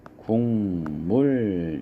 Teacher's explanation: 국물 기역은 이응으로 이렇게 바뀌어서 소리가 나겠죠. 그래서 발음을 하면 국물 이렇게 발음이 됩니다.